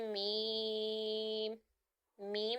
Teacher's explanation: मीम जो है दोनों होठों के खुश्क हिस्से से अदा होगा